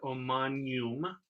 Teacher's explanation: in this case we glide the g and the n together